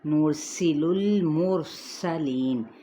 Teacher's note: سین پہ سیٹی کو واضح کریں گے · ہلانے سے مراد نرسل اس طریقے سے نہیں پڑھنا، نرسل المرسلین۔ یہاں پہ را ساکن ما قبل ضمہ ہے تو ہم کیا کریں گے، را پر پڑھیں گے